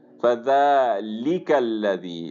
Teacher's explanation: ذال کے اوپر کھڑی فتحہ ہے اور اس کو ہم لمبا کریں گے ایک الف کے برابر۔ فذالک الذی، لام کو پر نہیں کریں گے، اس کو باریک ہی رکھیں گے، صرف لفظ جو اللہ عز و جل ہے اس کے اندر لام کو پر کیا جاتا ہے۔